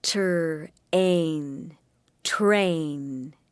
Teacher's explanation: the t sound and the er sound blend together to make the tur sound at the beginning of train